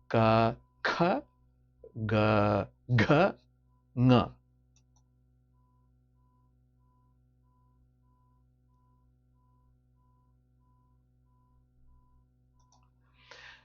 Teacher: It's either produced in the throat or at the back of the tongue and the palate.